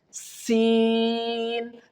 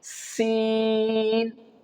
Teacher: When you pronounce the letter seen, the whistle sound will produce. And if the whistle sound will produce, it means you are pronouncing the letter seen correctly.